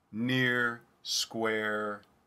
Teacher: rotissity with another vowel symbol in between because i will say the schwa roticity is commonly used to express the r that is post-vowel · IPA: ɚ